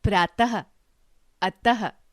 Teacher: बोलते समय ह की ध्वनि निकलती है, जैसे प्रातः, अतः आदि।